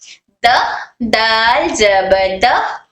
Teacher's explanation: دال ہمارے زبان کی نوک، ہمارے زبان کا فرنٹ والا حصہ اوپر کے دانتوں کی اندرونی جڑ کو ٹچ کر کر حرف دال ادا ہوتا ہے